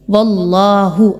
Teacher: اللہ سے پہلے والا جو حرف ہے اس پر زبر آ رہی ہے، اللہ کی ادائیگی کو پر پڑھیں گے، باریک نہیں رکھنا